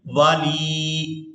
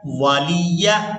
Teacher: हमने यहाँ पर ना तो वाव को खींचकर अदा करना है और ना ही लाम को, और इसके बाद या को भी हम बगैर खींचे ही अदा करेंगे